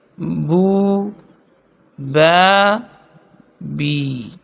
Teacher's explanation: اصل رابع جوف دہن یعنی منہ کے اندر کی خالی جگہ، اس سے ادا ہوتا ہے واو الف یا جبکہ یہ تینوں مدہ ہوں، یعنی واو ساکن ما قبل پیش، یا ساکن ما قبل زیر اور الف ساکن بے جٹ کے ما قبل زبر، یہ تینوں جوف دہن سے ادا ہوتے ہیں، جیسے بو، با، بی۔